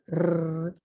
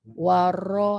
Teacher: lidah kita bergetar. Sifatnya getar. Huruf lain dia tak getar.